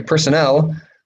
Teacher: personnel stress is on the last syllable